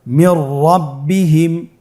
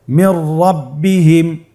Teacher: নুন সাকিনের পরে যদি র হরফ আসে তাহলে নুন সাকিনকে পরবর্তী হরফের সাথে মিলিয়ে গুন্না ছাড়া পড়তে হবে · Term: ইদগামে বিলা গুন্না